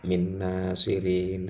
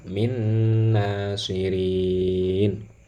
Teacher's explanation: nun sukun masuk ke dalam huruf nun ya. Jadi seolah-olah ini ada tasdidnya ya. Jadi sekaligus harus gunnah.